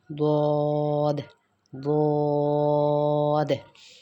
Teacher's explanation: حافیہ مطلب کہ جب زبان کی جو سائیڈ ہے، سائیڈ آف ٹنگ جب اوپر کے ہارڈ پیلٹ کے ساتھ لگتی ہے یا اوپر کے جو ہمارے جاز ہیں، جو جبڑے ہیں ان کے ساتھ جب زبان کی کروٹ ہمارے اوپر کی داڑھوں سے لگے گی تب ہمارے پاس ضاد ادا ہوگا